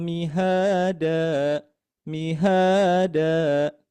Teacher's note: di H ini dibaca panjang dua harakat karena ee dihukumi yaitu mad asli. Dibaca panjang dua harakat.